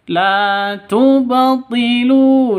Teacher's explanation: qalqalah sugro ada di tengah. La tubatilu. Dipantulkan ke huruf ba-nya ya. Lu panjang 2 ketukan karena ada waw mati diawali dengan dhammah.